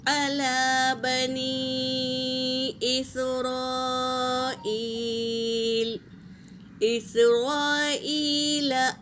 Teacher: مد منفصل اور مد متصل ہے، مد تو اسے 3 سے 4 الف کے مقدار کھینچیں گے۔